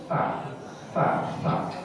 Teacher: Kalau sa, dia di ujung lidah menyentuh langit-langit gigi di atas gigi. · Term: huruf sa